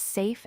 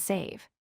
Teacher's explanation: Another important pair is safe and save. Safe ends with the unvoiced F while save ends with the voiced V